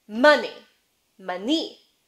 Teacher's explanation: the uh as in strut gets advanced in the mouth so it's moving this way towards the middle kind of towards schwa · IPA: [ʌ]